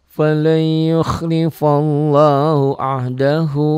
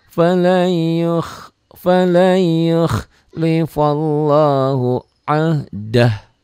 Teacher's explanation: Apabila berhenti membacanya, dibacanya jadi pendek.